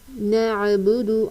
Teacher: عین کی ادائیگی بالکل واضح رکھنی ہے، یہاں پر ہا کی آواز نہیں نکالنی. نعبد، عین وسط حلق سے ادا ہوتا ہے. با کے اوپر پیش کی حرکت ہے، زبر زیر پیش کو کھینچ کر نہیں پڑھا جاتا.